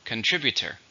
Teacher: How many syllables in contributor? 4. Stresses on the second.